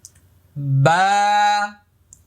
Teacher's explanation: দেখেন স্বাভাবিকভাবে আমি আয়না দিয়ে দেখছি, বা বা, লক্ষ্য করুন, বা এক আলিফ পরিমাণ লম্বা হবে, মুখটা খালি ফাঁকা হবে।